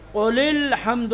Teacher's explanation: لام کو سیدھے لام میں ملا دیں گے اور یہ لکھا رہے گا لیکن اس کو پڑھیں گے نہیں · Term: حمزہ وصل